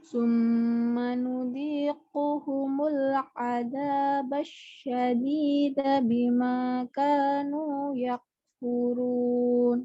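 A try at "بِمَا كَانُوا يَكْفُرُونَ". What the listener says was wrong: Oke, sekarang kafnya dilepas udaranya. Kanu yak, lepas yak gitu ya.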